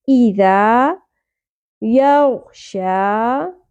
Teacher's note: واللیل اذا، ای حمزہ کے نیچے زیر ہے، اس کو ہم شارٹ پڑھیں گے۔ ذال نرمی سے ادا ہوگا، سیٹی یا بزنگ ساؤنڈ نہیں آنی چاہیے، یہ والی ساؤنڈ نہیں ہوگی۔